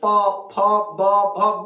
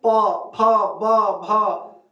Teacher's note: ऐसे आप बोलेंगे तो इसमें ओठ का प्रयोग हो रहा है